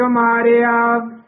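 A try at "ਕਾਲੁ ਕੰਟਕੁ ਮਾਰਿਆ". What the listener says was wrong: कंटक मारिया, कमारिया नहीं बोलना। काल कंटक मारिया शुद्ध बोलना है।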